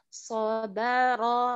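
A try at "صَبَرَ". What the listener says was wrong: Tapi kita terlalu tebal ya, ro-nya.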